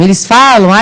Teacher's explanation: o Fá é a sílaba tônica